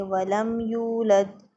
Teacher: میم ساکن ہے اس کے بعد یا آ گئی تو یہاں پر میم کو ہم ظاہر کر کے پڑھیں گے، کوئی غنّہ نہیں کریں گے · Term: اظہار شفوی